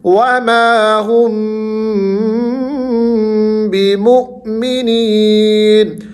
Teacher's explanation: میم ساکن کی آواز پر تھوڑا سا ٹھہراؤ کرنا ہے، ناک میں آواز کو لے کر جانا ہے۔